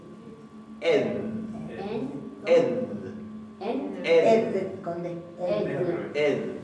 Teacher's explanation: una D fricativa suave